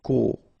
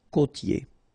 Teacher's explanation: you get this O, accent circumflex, you tend to insist a little bit more on it, so it's a bit lower, co. Okay, côtier, okay, I-E-R here, ye, côtier.